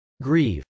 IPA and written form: grˈiv (grieve)